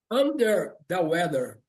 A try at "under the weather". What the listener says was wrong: Just be careful with your tongue. Your tongue shouldn't come out after me.